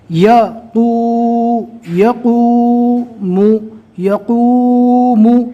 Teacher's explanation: واویلین کو کھینچا نہیں جائے گا، واویلین کو نرم آواز سے جلدی پڑھنا ہے، اور واو مدہ میں واو مدہ کے پیش کو ایک الف کے برابر کھینچ کر پڑھنا ہے